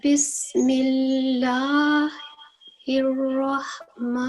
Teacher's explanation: vertical فتح ہے اور اس کو ہم 2 سیکنڈ کے لیے پرولونگ کریں گے